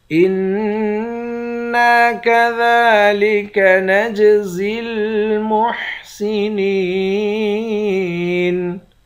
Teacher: نون مشدد پر غنہ کریں گے، نون کے بعد الف ہے، الف حروف مدہ ہے، ایک الف کی مقدار کھینچ کر پڑھیں گے۔